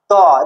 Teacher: ত যখন উচ্চারণ করবি জিভটা দাঁতে লাগছে, ত দেখ দাঁত যদি না থাকে যারা ফোগলা তাকে হাওয়া বেরিয়ে যাবে মুখ থেকে, ঠিক আছে। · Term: দন্ত ধ্বনি